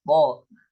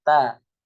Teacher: Kalau to itu dia punya sifat isti'la dan juga itbaq, to. Tapi kalau misalnya ta dia punya sifat istifal dan juga infitah